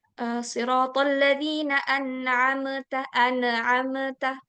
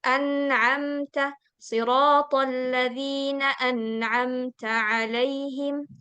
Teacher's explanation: mim kalau misalnya sukun dia enggak dipantulkan